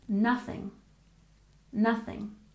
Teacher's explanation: sound in here remember to stick your tongue between your teeth and we stress the first syllable